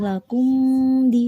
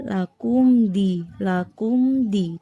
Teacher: nggak boleh dibaca dengung lakum di, salah ya. Tapi lakum di dibaca jelas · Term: idhar syafawi